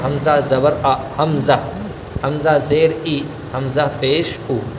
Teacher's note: اس کا مخرج نکلتا ہے اقصائے حلق، یعنی حلق کے درمیانی حصے سے وہ ادا ہوتا ہے